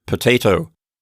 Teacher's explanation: It goes by so quick that the quality of it changes from an O to something else altogether. So again, the term for that is called a reduced vowel.